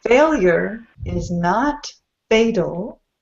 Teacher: When pronounced by American English speakers, usually sounds like fatal. The T goes to a D sound.